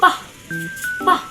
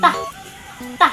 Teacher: Ang daan ng hangin ay harang na harang.